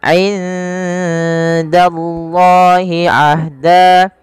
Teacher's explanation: nun mati bertemu dengan dal, samarkan nunnya kepada huruf dal karena ia ada bacaan ikhfa yang dimana suara nunnya samarkan kepada huruf dal.